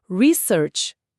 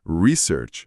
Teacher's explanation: a entonação forte cai na primeira sílaba para o substantivo, né? Research.